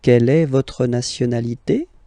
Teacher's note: raise a little bit at the end